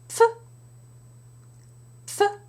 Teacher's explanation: there is a strong release of air strong exhalation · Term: PF combination